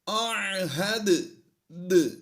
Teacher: حروف قلقلہ 5 ہیں، قاف، طا، با، جیم، دال۔ یہ حروف جب بھی ساکن ہوں گے تو ان میں قلقلہ کیا جائے گا، یعنی آواز تھوڑا ہلتی ہوئی محسوس ہوگی۔